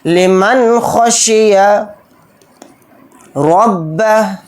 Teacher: ذالک لمن خشی، ذال کے اوپر کھڑا زبر ہے، ذال کو تھوڑا کھینچ کر پڑھیں گے، لام کو جلدی پڑھیں گے، کاف کو جلدی پڑھیں گے، لمن کو جلدی پڑھیں گے، اور نون ساکن کے بعد خا آ رہا ہے، خا اظہار حلقی کے 6 حروف میں سے ایک حرف ہے، نون کی آواز کو ظاہر کر کے بلا غنہ کے جلد پڑھیں گے · را کو با کے اندر ملا دیں گے، اور را کو یہاں پر موٹا پڑھیں گے، با کو جلدی پڑھیں گے، اور ہا کو ساکن بنا کر پڑھیں گے کیونکہ یہاں پر آیت اور حالت وقف میں ہا ساکن ہو کر پڑھا جائے گا، پھر الٹا پیش نہیں پڑھا جائے گا۔